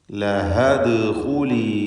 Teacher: അപ്പോൾ ചേർത്ത് വായിക്കുമ്പോൾ ലഹ എന്ന അലിഫിൻ്റെ സുക്കൂനും ദാലിൻ്റെ സുക്കൂനും ഒരുമിച്ച് ചേർന്ന് വരുന്നതുകൊണ്ട്, അഥവാ ഇൽത്തിഖാഉസ് സാക്കിനൈൻ സംഭവിക്കുന്നതിനാൽ അതിൻ്റെ പരിഹാരമായി അലിഫിനെ, ദീർഘാക്ഷരമായ അലിഫിനെ ഹദ്ഫ് ചെയ്ത് ശബ്ദത്തിൽ നിന്ന്, ഉച്ചാരണത്തിൽ നിന്ന് ഒഴിവാക്കി